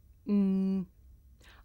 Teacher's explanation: this is a consonant sound it's pronounced hmm I make this sound by closing my lips and letting the sound come through my nose